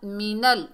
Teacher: नून को लाम से मिलाएंगे, बीच में हमज़तुल वसल हज़फ हो जाएगा।